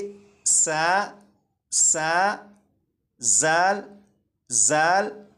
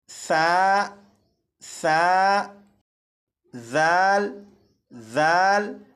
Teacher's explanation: ऊपर के दो दांतों से लगाकर पढ़ेंगे तो इन हरूफ की सीटी की आवाज खत्म हो जाएगी